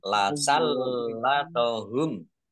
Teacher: lamnya dibaca double, ada tasdidnya. Biar tampak double maka ditekan.